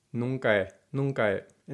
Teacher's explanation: That's because, of course, the H is silent. The two vowels, a, e, come together, and the two E's get reduced into one short e.